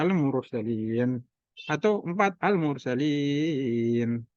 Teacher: akhirnya dengan mat arid li sukun bisa 2, 4 atau 6 harokat.